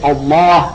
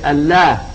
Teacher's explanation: lam is the only lam of tafkhim in the Arabic language. It's an emphatic lam. You say Allah and you don't say Allah, which normally that's the way the Arabs would pronounce a word with the lam.